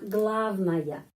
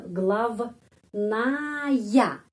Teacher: huruf ya tidak mendapat penekanan karena huruf A mendapat penekanan